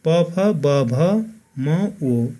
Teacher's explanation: दुवै ओठको सक्रियताबाट उच्चारण हुने वर्णहरू नै ओष्ठ्य वर्ण हुन्।